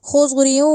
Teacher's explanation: پڑھا جائے گا، را کو منہ کو گول کر کے، خضریوں، اب خض کا جو خو ہے اور جو زود ہے دونوں کو موٹا کر کے پڑھنا ہے ، خضری نہیں کہنا، ایک تو خا نہیں کہنا، دوسرا زاد